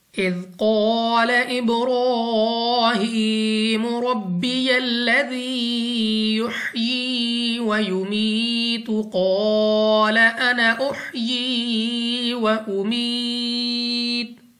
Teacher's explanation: را پر کھڑا زبر، اس کو ایک تو پر یعنی موٹا پڑھنا ہے، دوسرا 2 سیکنڈ تک لمبا بھی کریں گے۔